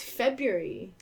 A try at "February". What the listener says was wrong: I don't think you pronounce the BR.